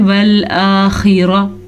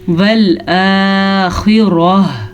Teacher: आखिर में हा की आवाज़ ज़रूर आनी चाहिए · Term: गोल हा